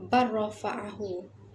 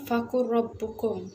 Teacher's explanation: Jadi apabila kita sebut idgham al-mutaqarribain, kita tengok pada contoh huruf lam mati bertemu dengan ra berbaris, barrafa'ahu. Jadi lam tu terus hilang dan huruf ra tu akan masuk ke dalam huruf lam.